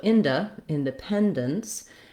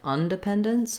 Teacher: So with the prefix in and un, you do want to be careful to use I for in and schwa, for un.